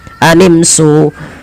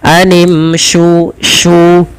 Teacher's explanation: Posisi makhraj huruf shin adalah di tengah lidah kita, sya, dan dia memiliki sifat tafashi, intisyarus saut, ya, menyebarnya suara di dalam mulut kita.